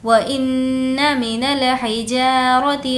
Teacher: نون پر تشدید غنہ ہوگا